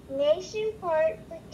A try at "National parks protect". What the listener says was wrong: Not nation, National parks.